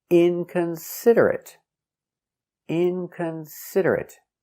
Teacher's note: five syllables inconsiderate stress on the first syllable and third syllable